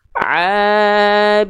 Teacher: contoh abiduna nadanya flat boleh tapi kadarnya tetap dua harakat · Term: Mad Thobi'i